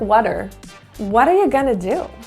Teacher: so the a-r-e turns to ER that quick little ER sound and the T actually turns into a quick what we call